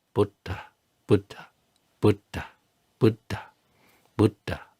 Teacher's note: can you hear that little puff on the dh at the end of Buddha? So, that's these are the aspirated consonants.